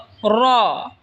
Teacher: র জিহ্বার আগার পিঠ তার বরাবর ওপরে তালের সঙ্গে লাগায় উচ্চারণ হবে র।